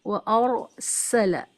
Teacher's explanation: آپ سین کی آواز کو ود وسل سیٹی ساؤنڈ کے ساتھ میں پڑھیں